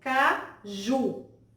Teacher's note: Nós podemos observar aí que a sílaba ju, a última sílaba dessa palavra, é a sílaba tônica. Nós observamos que essa tonicidade se deve justamente por conta da letrinha U, que é uma letrinha naturalmente forte.